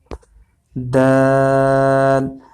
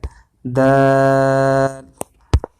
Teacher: دال میں آپ نے دیکھا کہ یہ ریڈ کلر کی جو زبان ہمیں نظر آ رہی ہے یہ اوپر والے دانتوں کو لگ رہی ہے، دانتوں کے کنارے کے جو قریب والا حصہ وہاں لگ رہی ہے۔